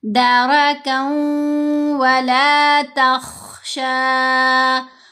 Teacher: خا کو موٹا پڑھنا ہے، یہ حروف مستعلیہ میں سے ہے